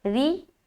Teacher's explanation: را باریک ہوگی کیونکہ زیر کے ساتھ آ رہی ہے